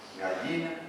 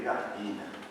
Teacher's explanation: Y el yeísmo es la pronunciación de la Y por la L.